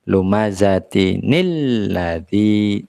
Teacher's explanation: Ya, jadinya lumazatinil. Nah, jadi kalau ada tanwin diikuti oleh lam alif, ya, maka jadinya ada nun, ada sisipan dari huruf nun di sana.